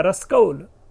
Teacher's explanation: क स परिवर्तित हो रहा है, अपने को इंटरचेंज कर रहा है, और बन गया रसकौल। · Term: वर्ण विपर्यय